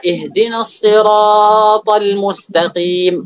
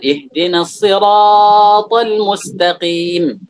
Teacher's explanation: mereka memanjangkan as-sirat aktsar min al-madd at-tabi'i, lebih dari mad tabi'i.